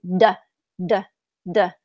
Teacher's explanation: your throat is vibrating you can feel it